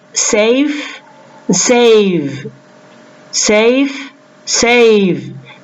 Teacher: comes before it longer for example we say safe and save the vowel in the word save is pronounced with more length than the vowel in the word safe